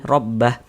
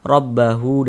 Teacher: mad silahnya itu gugur. Tidak berlaku tanda panjangnya.